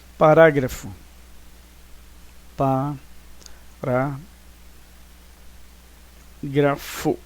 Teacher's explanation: então a antepenúltima sílaba é mais forte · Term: proparoxítonas